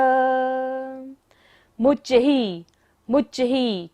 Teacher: च के ऊपर क्या है विसर्ग है सांस लेंगे भी और वापस भी छोड़ना है